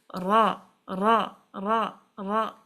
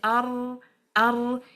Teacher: The letter ra, the sound is not finding its way out from these sides because your tongue is blocking. The passage is blocked. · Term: inhiraf